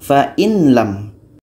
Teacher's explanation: Fa'in lam masih terdengar nun, maka itu belum disebut dengan idgham kamil karena belum masuk secara sempurna.